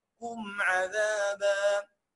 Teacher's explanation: والميم ساكنه وراها في العين تبقى اظهار